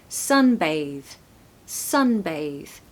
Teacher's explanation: breathy Airy th no it's a voiced th so sunbathe sunbathe stress the first syllable and as you can probably hear there's an alphabet a sound · you're not gonna do a breathy Airy th no it's a voiced th